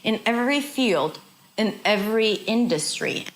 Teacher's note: So industry is a little higher in pitch. It's a little longer